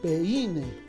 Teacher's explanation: No decimos peine, porque la i no se tilda, pues, ¿no? La mayor fuerza de voz está en la e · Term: diptongo